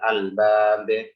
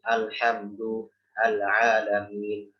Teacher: Maka lamnya jelas, huruf yang datang setelah lam juga jelas.